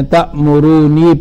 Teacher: نافع صاحب ایک نون پڑھتے ہیں، تأمرونی پڑھتے ہیں۔